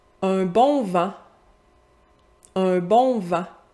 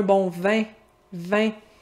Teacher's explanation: Un bon vent, plus ouvert. Si j'avais dit la première, un bon vin. Vin. Plus fermé, plus étiré.